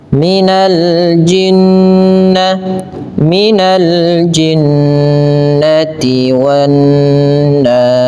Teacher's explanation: Dalam hukum tajwidnya dikenal dengan istilah ghunah, yaitu membaca dengan memasukkan suara kepada rongga hidung sehingga dia sambil ditahan dua harakat.